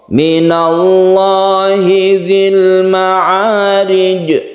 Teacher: Sukunkan kemudian qalqalahkan. Ini adalah qalqalah kubra karena di akhir ayat.